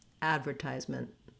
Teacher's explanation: I almost go directly from my M to my NT, ment, advertisement. We also will often not release that final T, so I use more of a stop T. I cut my N short and I close off for the T, but I don't let it out in a burst of air.